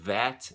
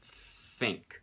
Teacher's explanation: the two different ways of pronouncing th like the th in that and the th in think um same difference the only difference is voicing